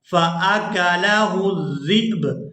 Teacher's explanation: हमज़ा जब साकिन हो तो ये झटके के साथ अदा होता है